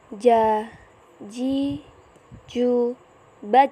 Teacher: dilafalkan dengan menyentuhkan Tengah lidah ke daerah langit-langit